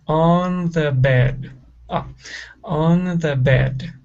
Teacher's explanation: give me a good D sound at the end instead of using a Spanish D